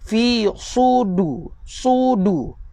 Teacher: Lidah kena terangkat sedikit nak menunjukkan sifat yang ada pada huruf sad ini berbeza dengan sifat yang ada pada huruf sin.